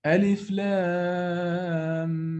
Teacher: I've merged the first meme of the lam with the second meme.